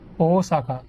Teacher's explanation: there's an emphasis on the beginning, the O